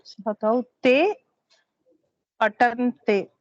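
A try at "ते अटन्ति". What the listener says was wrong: Atanti. Not te.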